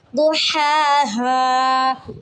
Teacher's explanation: حلوائی والا ہا اس کو آپ نے حلق کے درمیانی حصے سے ادا کرنا ہوتا ہے